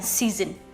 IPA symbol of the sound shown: z